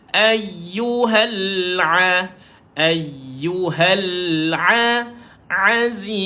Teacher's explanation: ain ni duduknya di tengah-tengah kerongkong